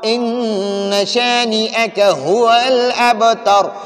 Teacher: میں نے ابھی بتایا کہ نون مشدد اور میم مشدد پر ہمیشہ غنہ کریں گے، تو ادھر نون مشدد ہے، اس پر ہم ہمیشہ غنہ کریں گے۔ ان یہ ناک میں آواز کو لے جائیں گے۔